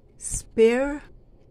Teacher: Wala pong vowel sound dyan. At yung A, hindi po binibigkas ng buo. Weak vowel po ang ginagamit. Yun pong T ay CH ang tunog.